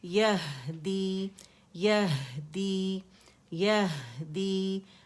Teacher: ہا کا ہمس اور رخاوہ شو کریں گے